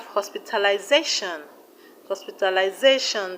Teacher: The stress is on ZA.